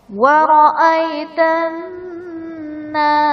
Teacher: نون مشدد ہے، یہاں پر غنہ کر کے پڑھیں گے